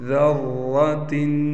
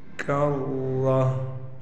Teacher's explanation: گول تا وقف کی حالت میں ہا بن جاتی ہے